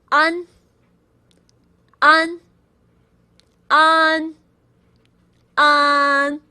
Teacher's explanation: I I a an is a very unique Chinese sound and it doesn't really have an exact English equivalent. The closest sound to English will be u n as in sun. But you want to open your mouth wider